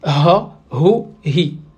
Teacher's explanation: ce n'est pas un H muet, mais plutôt un H anglais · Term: H arabe